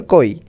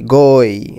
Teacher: ক কি বলো তো, অঘোষ, তাহলে ক অল্প উচ্চারণ করতে হবে